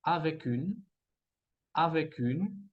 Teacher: Avec, escuchamos la C, que se va a conectar con la U de une